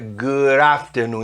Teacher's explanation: a pronúncia é good afternoon, emendando o D com o A